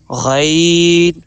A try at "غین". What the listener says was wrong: موٹا تھوڑا سا غین کو تھوڑا سا موٹا غین